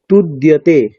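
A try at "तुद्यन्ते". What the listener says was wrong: দ দ ওটা ড নয়, আপনি তো মূর্ধন্য ড উচ্চারণ করছেন, এটা হচ্ছে দন্তীয় দকার, তাই তো?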